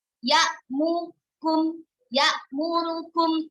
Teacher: Ketika membaca ya'murukum, hanya harokat dhammahnya saja yang dibaca dengan ikhtilas. Ya'mukum, ya'murukum, hanya sepertiga saja.